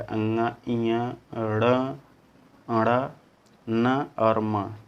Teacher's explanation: इन सभी के बोलने पर जो है नाक से भी हवा जो है निकलती है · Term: नासिक